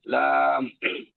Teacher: জিহ্বার আগার কিনারার সামনের উপরের এক পাশের দাঁতের গোড়ার সঙ্গে লাগে